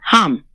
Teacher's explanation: just a long soft exhale. Say it like warm breath on a mirror. H like a sigh from the deepest part of you.